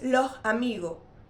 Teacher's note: la primera s es aspirada y la segunda se elimina. En lugar de decir los amigos, digo lo amigo. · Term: español canario